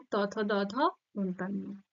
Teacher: ত দাঁত স্পর্শ করছে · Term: দন্ত ধ্বনি